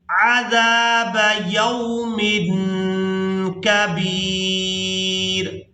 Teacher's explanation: وَيُؤْتِ كُلَّ ذِي فَضْلٍ فَضْلَهُ، فَضْلٍ فَضْلَهُ، وَإِن تَوَلَّوْا، وَإِن تَوَلَّوْا فَإِنِّي أَخَافُ عَلَيْكُمْ، فَإِنِّي أَخَافُ عَلَيْكُمْ عَذَابَ يَوْمٍ كَبِيرٍ، یہاں تنوین پر اخفا کریں گے، یعنی تنوین میں جو نون کی آواز ہے اس کو ناک میں چھپا کر ادا کریں گے